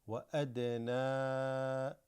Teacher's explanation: This dal has a qalqala, slightly almost like doubled.